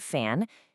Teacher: you just touch your top teeth to your bottom lip and let the air squeeze through